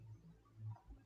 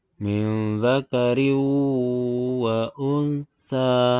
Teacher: Jadi apabila ada nun mati dan tanwin ketemu dengan yang 4 itu maka dibaca idgham biwunnah. Cara membacanya ditahan serta dengung.